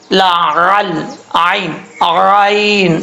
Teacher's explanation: عین کو جو ہے وہ مخرج سے ادا کرنا ہے، اس چیز کا آپ نے خاص خیال رکھنا ہے، حمزے کی آواز نہیں آنی چاہیے